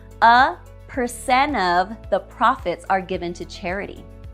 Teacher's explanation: Now let's talk about deleting the letter T between NT, nt, and a vowel sound. When a word ending in NT links into a word beginning with a vowel sound, the final T is often deleted.